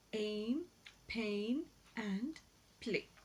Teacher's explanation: So when we describe these, the A sound is described as a glide from a front unrounded vowel just below the half closed position to a centralized front unrounded vowel just above the half closed position, and it occurs initially, medially, and finally in the words aim, pain, and play, respectively. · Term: diphthongs